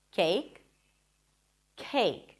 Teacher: The second one was aspirated, as you should pronounce it in English, cake. So it feels like there is a little H right after the k sound.